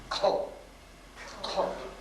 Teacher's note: The H means it's aspirated. Air comes out of your mouth.